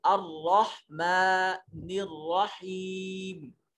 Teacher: رحمان ہا کو حلق سے ادا کریں گے اور میم کے اوپر کھڑا زبر ہے، اس کو ایک الف کے قیم مقام لمبا کریں گے۔ رحیم، اس میں یا سے پہلے زیر آ رہا ہے تو اس کو بھی ہم حروف مدہ ہے تو لمبا کریں گے۔